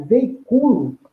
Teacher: Nós temos aí um encontro vocálico, cujo segunda vogal, a segunda sílaba desse encontro vocálico, que por conseguinte é um encontro vocálico que ocorre uma interrupção, uma pausa, daí haver esse hiato, né? A sílaba tônica dele se desloca, não é mais o i, a tônica, é o u. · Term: paroxítona